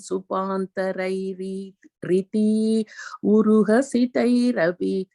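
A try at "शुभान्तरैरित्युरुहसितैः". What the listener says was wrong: Even there also, I think the Shubhantarair iti and Ura Hasitair, if you have it, I think we joined it, right? So it becomes Shubhantarairiat Yuru. Shubhantarair it Yuru. Hasitair, yeah.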